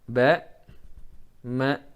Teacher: ini dari makhraj yang sama bibir, jangan sampai ya, jangan sampai teridghamkan satu sama lain